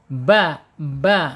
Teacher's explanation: ba secara mahraj asyafatain ya asyafatain dua bibir